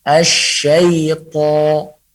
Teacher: syaiton suara ke atas tapi tidak daripada hidung, tidak ada yang mendangau di hidung.